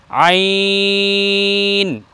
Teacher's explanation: একটু চেপে বলতে হবে হলকের মধ্যখান থেকে আইন।